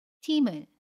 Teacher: 팀의 받침 미음과 모음 의가 만납니다. 그러면 받침 미음이 이응 자리로 가서 팀을 이라고 발음해요. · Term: 연음